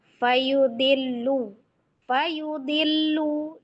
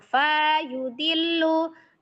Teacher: di awalan ada tiga huruf berturut-turut itu pendek semua ya